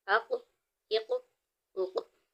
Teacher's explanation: اس کی ادائیگی میں آواز لوٹتی ہوئی معلوم ہوگی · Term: حروف قلقلہ